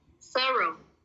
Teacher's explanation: Kalau mau yang lebih advance lagi, R-nya diilangin.